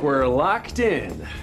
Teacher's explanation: the ED is reduced and it links to the following word.